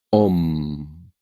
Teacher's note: It's a singing ending, and the first letter is a boy, so it's a boring, monotonous tone. You start with a speechless sound, and then launch into the vowel, and it becomes om.